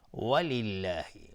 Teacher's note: لفظ جلاله اینجا ترقیق و نازک تلفظ میشه چون کسره داره